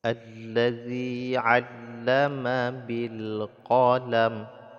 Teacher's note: Allazi dibaca panjang 2 harakat mad asli, yaitu harakat kasrah, ya, harakat di bawah disebut dengan harakat kasrah bertemu dengan ya yang sukun maka dipanjangkan 2 harakat, namanya mad asli.